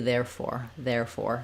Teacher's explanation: it has first syllable stress so it has that there has the air diphthong